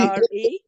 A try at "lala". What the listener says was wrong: no, you see, L-A-L-A. Remember the L-A, which is Lala. Now, some communities cannot pronounce L. So they end up pronouncing R instead of L. There are communities that have that problem. But that is in their national dialect. So they pronounce L-A-L-A, sleep, in their language is Rara, which means the same word.